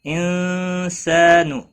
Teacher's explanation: نون ساکن کے بعد حروف اخفا کا سینہ ہے، اخفا حقیقی ہوگا، گنہ کے ساتھ پڑھیں گے۔